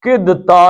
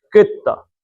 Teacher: اب یہ دال نہیں ہے، کدتا نہیں پڑھیں گے بلکہ کیا پڑھیں گے، کتا، کیونکہ دال کے بعد تے آئی ہے